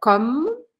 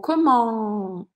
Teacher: E a pronúncia é comme, paro no M, ou comment, e faço um som anasalado.